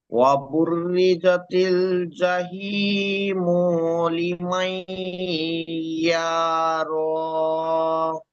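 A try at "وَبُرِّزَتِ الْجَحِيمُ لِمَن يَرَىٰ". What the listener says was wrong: দুই জায়গায় টান হয়েছে, জাহি মু টান দিয়েছেন, মু টান হবে না, আর এখানে ইয়া র, ইয়া টান দিয়েছেন, এই দুটো টান হবে জি না।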